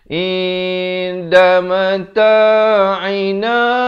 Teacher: Ain di pertengahan kerongkong